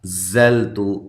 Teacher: انزلت حمزہ کو تحقیق کے ساتھ نون ساکنہ کا اخفا ہے مع الغنہ۔ زلت زا کو زور سے سختی کے ساتھ ادا کرنا ہے، سیٹی کے ساتھ ادا کرنا ہے، لام کو ہلانا نہیں ہے، تا کو باریک پڑھنا ہے اور لمبا بھی نہیں کرنا۔